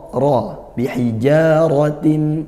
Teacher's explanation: ra fathah, hukumnya ra tafkhim, dibaca tebal, manggal lidah dinaikkan.